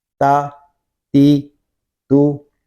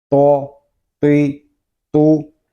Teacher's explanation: تا کو باریک پڑھیں گے اور تو کو پر یعنی موٹا پڑھیں گے